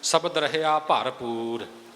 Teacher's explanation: ਉਚਾਰਨ ਹੈ ਸਬਦ ਰਹਿਆ ਭਰਪੂਰ ਸ਼ਬਦ ਇਕੱਠਾ ਹੈ ਨਿਖੇੜਾ ਨਹੀਂ ਕਰਨਾ ਪਰ ਭਬੇ ਦਾ ਜਿਹੜਾ ਭਾਰਾਪਣ ਹੈ ਉਹਨੂੰ ਆਰੰਭ ਵਿੱਚ ਹੀ ਰੱਖ ਲੈਣਾ